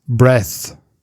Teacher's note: So an unvoiced TH sound.